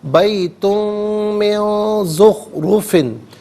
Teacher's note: بیتن من نہیں، بیتن من، اچھا من میں نون ساکن ہے، اس کے بعد زخرفن میں زا آ رہی ہے تو نون ساکن کو اخفاء کے ساتھ پڑھا جائے گا، یعنی ناک میں آواز لے جا کر گنگنانا